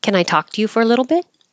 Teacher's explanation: the t's change to D's and you won't hear the T at the end you just hold the tongue in the T position